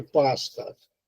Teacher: a média é articulada com a língua abaixada, quase em repouso